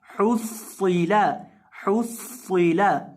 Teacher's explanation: हा पेश सौद हुस सौद लेर सी हुस्सी। सौद को यहाँ मोटा भी करेंगे क्योंकि सौद जो है ये मोटे हरूफ में से है।